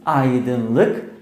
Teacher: Aydınlık, sessizlik, iyilik kelimelerinde a art ünlüsü ile başlayan kelime yine art ünlülerle devam etmiştir. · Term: kalınlık incelik uyumu